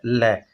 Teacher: वे वर्ण जिनके उच्चारण में जिव्या मसूड़ों को छूती है और हवा का प्रयोग जिव्या के हवा का प्रमुख वेग जिव्या के आसपास या अगल बगल से निकल जाता है उन्हें पार्श्विक वर्ण कहते हैं और वह केवल क्या है ल